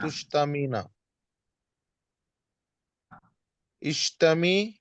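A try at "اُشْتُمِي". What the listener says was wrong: नहीं, आइन पे पेश है ना इसको। शतमा को नस, तो आइन पे पेश हो तो हमजा पे भी पेश ला लेते हैं। उश्तुमी। उश्तुमी, तू गाली दे।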